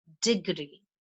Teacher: the stress is on DE